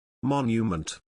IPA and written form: ˈmɒn.jə.mənt (Monument)